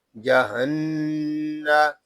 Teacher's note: یہاں نون مشدد ہے، اس کو غننے کے ساتھ پڑھیں گے